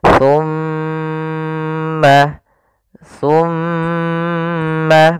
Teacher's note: Cara membacanya yaitu suara mimnya ditahan dulu. Jangan langsung dilepas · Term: bacaan gunnah